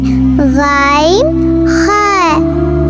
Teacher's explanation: আর 3 number মাখরাজ হলো হলকের শেষ ভাগ থেকে, এখান থেকে আসে গাইন